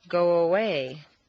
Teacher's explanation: a woo quite naturally leads into the next sound go away you don't want to say go away and break the undercurrent of your voice run it all together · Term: liaison